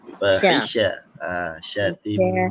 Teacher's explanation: Sya ni kena memenuhi ruang tengah. Dia tafasyi kan.